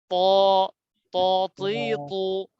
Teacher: জি আচ্ছা, তো এখন যে হরফটি আমরা দেখতে পাচ্ছি এর নাম হচ্ছে ত, মোটা ত, করে। হ্যাঁ, জিহ্বার আগা সামনের উপরের দুই দাঁতের গোড়ার সঙ্গে লাগাইয়া, দুই দাঁতের গোড়ার গোড়ার সঙ্গে সঙ্গে লাগে।